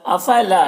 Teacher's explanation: یہاں پر الف مدہ ہے 1 الف کے برابر کھینچیں گے